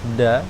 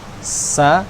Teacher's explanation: kalau da itu lebih ke atas, da, jadi dia ee bertemu dengan gusi bagian atas. Kalau sa itu bagian bawah.